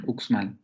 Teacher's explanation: tendríamos dos consonantes en la coda de esa sílaba. La velar oclusiva sorda y luego la alveolar fricativa sorda